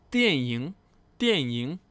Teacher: fourth tone, third tone, movie